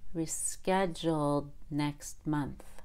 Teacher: I hold the D after the L in schedule